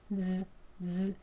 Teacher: 윗니 안쪽과 잇몸이 만나는 치경 위치입니다. 혀끝으로 살짝 대어 보시면 윗니 안쪽에서요.